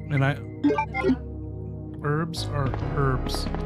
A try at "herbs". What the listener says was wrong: H is silent.